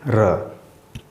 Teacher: जब हम र बोलते हैं तो आप देखेंगे कि आपके उच्चारण में थोड़ा सा कंपन होती है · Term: लुंठित